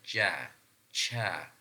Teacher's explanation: Then when our mouth is full, the air which is trapped inside of our mouth is coming out in a slow manner or is released slowly. So the air is coming out slowly, like we say ja, cha, something like this. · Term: affricate sounds